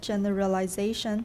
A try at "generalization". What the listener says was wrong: Generalization. There's a timing issue there. Instead of generalization, which is too slow, we have to speed up some of the unstressed syllables. Generalization.